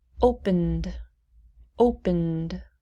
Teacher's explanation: We go directly from the N to the D. Opened. No id sound.